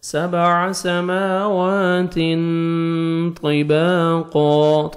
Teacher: تا کو باریک پڑھ کے آپ نے تنوین کے بعد دیکھیں حروف اخفا میں سے طا ہے تو یہاں پہ آپ نے نوز میں ساؤنڈ لے کے جانا ہے، اخفا کرنا ہے. 7 سماوات طباقا، طا کو موٹا کر کے پڑھیں گے.